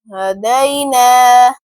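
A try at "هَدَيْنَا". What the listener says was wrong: Last میں آپ کی ہا کی آواز آتی ہے، اس کو کنٹرول کریں. ہدینا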